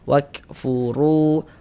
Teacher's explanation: Huruf ra memiliki harokat dhammah, maka ini huruf ra kita baca tafkhim, kita baca tebal, sehingga dengan menaikkan pangkal lidah kita ketika kita mengucapkannya.